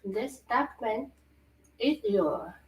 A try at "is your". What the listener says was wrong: Is your, not id your. Is your contract.